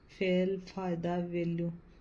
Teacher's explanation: दंतोष्ट दांत और होठ दोनों से बोले जाते हैं।